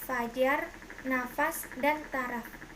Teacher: Konsonan F, kriterianya bunyi labiodental geseran tak bersuara, contoh kata fajar, nafas, dan taraf.